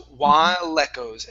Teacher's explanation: connect the L to the beginning of echoes. So it's no longer echoes, it's lecos.